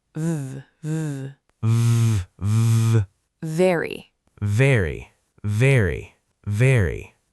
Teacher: Put your top teeth gently on your lower lip. Then vibrate. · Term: V sound